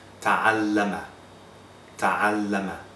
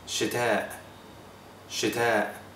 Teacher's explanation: an alif that follows a ta will be its frontal counterpart, as in bad, not father